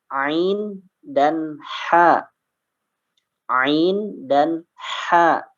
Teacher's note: Ya, itu sama tempat keluarnya ya, tenggorokan di bagian tengah.